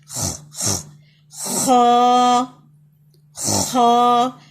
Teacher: جہاں سے خراش کی آواز ہوتی ہے، upper part of the throat, گلے کا سب سے اوپر والا حصہ.